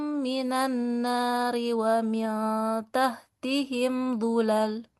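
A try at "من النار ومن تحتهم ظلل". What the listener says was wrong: Iya, bagus.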